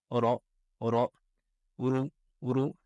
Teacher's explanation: la lettre ra se prononce avec le bout de la langue qui rentre en contact avec le début du palais